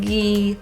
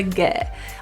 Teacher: instead of ghee pull your tongue a little lower for the get